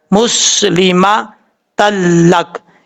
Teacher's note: آپ کو میں نے بتایا تھا 6 حروف ہیں حروف یرملون کے، ان میں سے 2 حروف ایسے ہیں لام اور را، ان میں ادغام تو ہوتا ہے لیکن غنہ نہیں ہوتا، یہ وہی ہے، یہاں پر ادغام تو ہو رہا ہے لیکن غنہ نہیں ہو رہا۔ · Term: ادغام یرملون